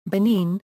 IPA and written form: bɨˈnɪn (Benin)